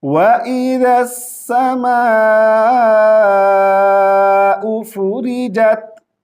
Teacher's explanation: یہاں پہ ذال کو سین کے ساتھ ملائیں گے